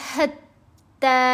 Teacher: ہا کو گلے کے درمیان والے حصے سے ادا کیا جائے گا